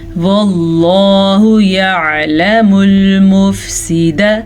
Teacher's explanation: لفظ اللہ سے پیچھے والے حرف پہ زبر ہے تو لفظ اللہ کو ہم پر پڑھیں گے. یعلم, عین کے مخرج کو واضح کر کے پڑھیں.